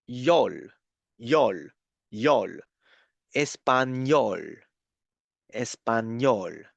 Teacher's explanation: you have to pronounce the N the N sound and then pronounce Y like in yacht